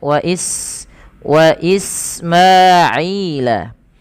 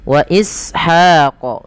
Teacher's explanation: Sifat sofir yaitu ada desisannya